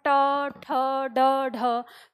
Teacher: जीभ हमारी पहले ऊपर उठती है और फिर नीचे झटके के साथ गिरती है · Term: उत्क्षिप्त वर्ग